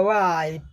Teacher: वाई में डब्ल्यू ध्वनि में एच का उच्चारण नहीं होगा